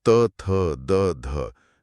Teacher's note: जीभ सीधे हमारे दांतों से टकराती है। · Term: त वर्ग